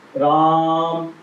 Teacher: एक मात्रा ये हो गई, यानी एक स्वर ये हो गया, एक स्वर ये हो गया, और म पर लगने वाला भी एक स्वर हो गया। म में आ का स्वर है, इसको हमने खींचा, जोर से बोला तो स्वर आगे बढ़ रहा है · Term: प्लुत स्वर